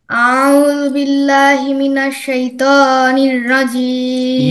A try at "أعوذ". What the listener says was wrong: You shouldn't stress first syllable, which is a. Make it first. It is going to be a. أعوذ. أعوذ. Do not say أعوذ. Do not make it, longer. It will be very fast and thin. أعوذ.